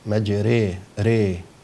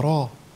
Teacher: فبعد كده هلاقي بيكلموا عن الحرف الثاني اللي هو من حروف الفرعية الألف الممالة، عندنا كلمة في رواية حفص مجري ري، طبعا لو هي غير ممالة تبقى را، لكن مع الإمالة هرقق الراء وأميل كما كذلك الألف